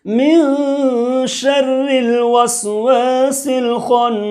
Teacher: ایک الف کے برابر ناک کے بانسا کے اندر میں نرم ہڈی کے اندر میں آواز چھپا کر کے بولنا ہے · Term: اخفاء حقیقی